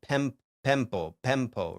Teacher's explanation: Um but that that is rarely going to come up in the reading of an ancient Greek text, you know, like ancient Greek texts typically like I mean no it it will >> in certain cases where it's like en like n the prefix n can turn into m before a p